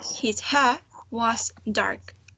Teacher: when we do not have a vowel sound after the r we do not pronounce it